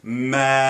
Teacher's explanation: I just made it more nasal, so I opened that soft palate up even more. The velum gateway is open even more. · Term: nasalized vowel